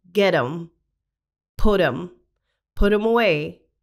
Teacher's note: so we will see that with get them and put them the T at the end of get and the T at the end of put is pronounced as a flappy sound so it sounds like a D sound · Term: flap T sound